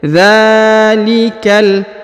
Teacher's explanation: Huruf dza dipanjangkan 2 harokat karena di atasnya terdapat alif kecil ya. Dzalikal, huruf ka langsung disambung ke huruf lam yang berharokat sukun.